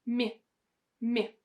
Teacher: I have my lips working and my tongue is not touching anywhere